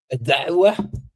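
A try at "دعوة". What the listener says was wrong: Non, tu es pas obligé d'appuyer dessus comme ça, juste dawa.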